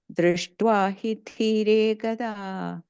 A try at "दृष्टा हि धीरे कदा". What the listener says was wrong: The last line, drishta, not drishtva. Drishta hi dhire kada.